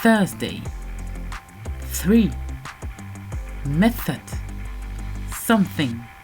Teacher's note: Les consonnes en anglais qu'on ne retrouve pas en français sont la consonne TH, th, la consonne TH, the, la consonne H, h et la consonne R, r. Alors, la première consonne TH est la version dure TH, où les cordes vocales ne vibrent pas. On passe la langue entre les dents et on pince comme ceci.